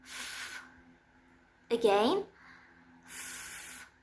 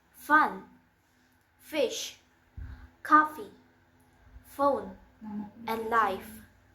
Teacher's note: And it's voiceless. The place of articulation is labiodental, and the manner of articulation is fricative. For example, fun, fish, coffee, phone, and life.